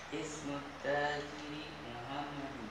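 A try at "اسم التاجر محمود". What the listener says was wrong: Mahmud. Mahmud bukan Muhammad. Mahmud itu bukan Muhammad. Kalau Muhammad enggak ada wawunya ya. Mim ha mim dal aja. Ha, ini mim ha mim waw dal. Mahmud.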